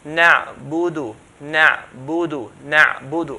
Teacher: To say the dal correctly with the dhamma, we open our lips forward. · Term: clear dhamma